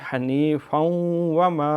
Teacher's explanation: حنیفاً یہاں ادغام ہے، تنوین کے بعد واو ہے